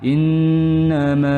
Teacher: inna itu hukumnya ghunah panjangkan dua harakat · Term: gunnah